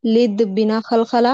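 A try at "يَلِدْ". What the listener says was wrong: नहीं, लिद में तो खलखलाऊंगा ना, लिद में खलखलाऊंगा ना, क्योंकि दाल खलखला का हर्फ है ना। तो बाजिम दाल।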